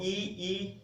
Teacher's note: देखो मध्य में ए है, और फिर बस जहां ई है वो अगर है, ई बोलकर देखो ई, तो जीभ आगे आती है ई में